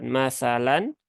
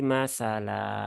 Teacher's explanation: lazim yaitu ee wakaf lazim maka ketika berhenti di situ nah fathah tanwinnya itu di dirubah ya menjadi ee mad Ya dengan panjang dua harakat